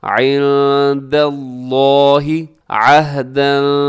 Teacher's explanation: لفظ اللہ کو اپنے موٹا پڑھنا ہے